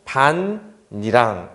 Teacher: 여기 디귿이 니은이 서로 연이어 만나잖아요 그럼 앞에 있던 디귿이 니은으로 바뀌는 일이 생겨요 즉 바 하고서 니은 그다음에 니은 이런 식으로 이렇게 하면은 반니랑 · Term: 교체